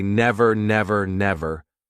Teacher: instead of worrying about this R and saying like ERR, nev RR, all you need to do is just drop the sound.